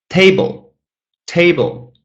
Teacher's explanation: Two syllables. The first one is stressed.